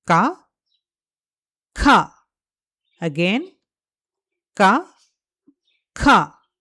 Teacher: Ka has a regular breath. Kha has a stronger breath.